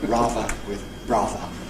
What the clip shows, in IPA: ˈrɑːvə